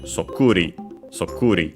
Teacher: It's an onomatopoeia, one of those in ri, and luckily, like most of those, accented on the syllable before the ri, so on the ku